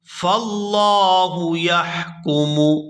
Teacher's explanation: یہاں لفظ اللہ کے لام کو پورا ادا کریں گے کیونکہ اس سے پہلے زبر ہے